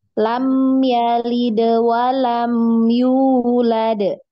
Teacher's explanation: Tidak ada tasdid di dal, di huruf yang berkolkolah. Maka jangan ditahan. Ya, langsung.